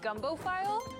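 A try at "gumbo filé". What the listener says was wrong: It's pronounced gumbo filet. Filet, not file, filet. It's pronounced filet.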